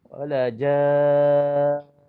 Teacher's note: walaupun berhenti wajibul gunnah itu tetap kita kena dengung 2 harakat